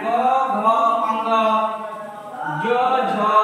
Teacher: तो जिन व्यंजनों के उच्चारण में स्वर तंत्रिका में कंपन हो, इसमें क्या हो सघोष में कंपन हो, सघोष या घोष व्यंजन कहते हैं।